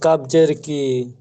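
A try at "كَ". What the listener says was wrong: কাব জবর কা। আছে সব জবর আছে, যতগুলো আছে না সব জবর, দের নেই পেশ নেই, সব জবর।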